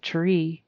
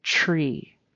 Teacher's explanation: that TR is sometimes pronounced as really a chr at least um in the western side of the United States. So it's instead of tr terra two separate sounds tr it's more like a chr tr. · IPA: /ʧɹ/